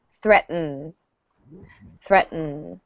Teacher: notice that the second T kind of goes away